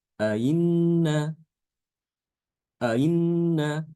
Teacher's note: Yajibu tashilu tsaniyah ma bainal hamzati wal ya. Hamzah yang kedua itu dibaca antara hamzah dengan ya. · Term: Tasil, tasil